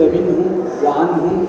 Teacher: فمخرج هذه النون من طرف اللسان ومعها غنه تخرج من الخياشيم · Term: ظاهرة